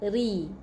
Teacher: ra, ni baris bawah kita baca dengan nipis, ra baris depan kita baca dengan tebal.